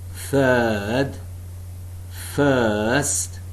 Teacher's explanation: the center of the tongue is raised between the half close and half open positions no firm contact being made between the tongue and the upper molars the lips are neutrally spread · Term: long vowel sounds